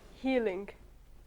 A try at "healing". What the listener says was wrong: I can't even see your lips moving like properly. It looks like elephant.